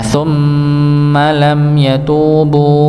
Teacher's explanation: mim tasydid maka didengungkan, sama seperti nun bertasydid.